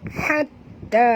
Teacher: Ta yang kedua itu berbaris di atas dan kena baca panjang kerana alif mad ni bertemu dengan hamzah mad jaiz munfasil.